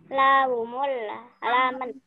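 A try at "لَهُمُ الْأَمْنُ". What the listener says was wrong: Ini a sayang ya, bukan la. Lahumul amn.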